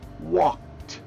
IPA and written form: wɔkt (walked)